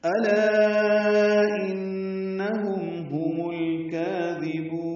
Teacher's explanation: حمزہ اقصى حلق سے بالجہر ادا کریں گے، لا الف مدہ، اس کے بعد حمزہ کی وجہ سے مد منفصل ہے.